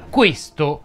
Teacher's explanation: questo si pronuncia con la e chiusa